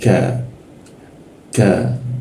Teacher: huruf K di Indonesia dia agak di antara langit-langit atas ya, bertemu dengan lidah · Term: K Indonesia